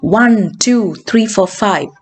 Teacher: when you're counting, the pitch rises, which is called rising intonation, or rising intonation, and when it stops, it falls, which is called falling.